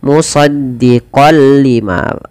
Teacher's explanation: Awalnya dibaca musaddiqal lima karena bertemu lam, masuk tanwinnya kepada lam, nunnya hilang. Musaddiqal lima tanpa ditahan. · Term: idgham bila gunnah